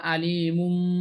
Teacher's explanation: তাহলে নুনের জায়গায় একটা মিম চলে আসবে, এটা আম না হয়ে এটা আম্বা হবে। নুনের জায়গায় মিম উচ্চারণ হবে · এখানে লিখে দিছি যে এখানে এখানে আলি ইমুনের মিমের উপর দুই পেশ তথা তানবিন হয়ে এরপর বা আসছে যা ইকরাবের হরফ, তাই তানবিনকে মিম দিয়ে পরিবর্তন করে পড়তে হবে, অর্থাৎ আলি ইমুন, আলি ইমুন না হয়ে এটা আলিমুম হবে। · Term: ইকলাব